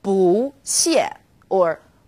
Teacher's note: bu when used on its own bu is fourth tone Bo when bu is used before another fourth tone it becomes second tone